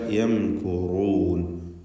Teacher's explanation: ഇതിൽ റാഇന് മാത്രമാണ് തഫ്ഖീം വരുന്നത്. റാഇനെ തടിപ്പിച്ച് ഉച്ചരിക്കുക. യംകുറൂൻ. റൂ എന്ന തടിപ്പിച്ച ശബ്ദം.